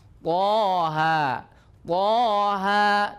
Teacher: Kalau toha dua-duanya 2 harokat. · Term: mad tabi'i harfi